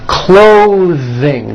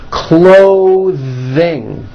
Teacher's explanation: Notice how my tongue comes out in the middle of the word and the TH sound is pushed out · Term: voiced TH sound